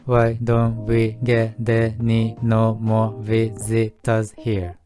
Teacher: get▁の末尾の▁t▁と▁any▁の頭の母音がつながるのと、あと▁t▁の音は▁d▁に変化することが多い